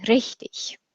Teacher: the dialect of German that my teacher spoke required you to roll your R